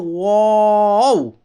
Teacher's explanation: واو میں چونکہ ہونٹ گول ہوتے ہیں، پڑھتے ہیں واو، تو واو میں ہونٹ گول ہوتے ہیں، تو واو کا مخرج ہے دونوں ہونٹوں کی گولائی سے ادا ہوتے ہیں۔ واو کا مخرج سمپل ہے، دونوں ہونٹوں کی گولائی سے ادا ہوتے ہیں۔